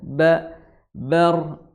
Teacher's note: makhrajnya di kedua bibir bawah dan bibir atas, kemudian roknya rok tebal karena banyak berharokat fathah ya.